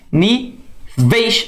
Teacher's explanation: a onde o tongo decrescente o som diminui ni veis ó como é que o e é bem mais forte que o i então o som cai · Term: ditongo decrescente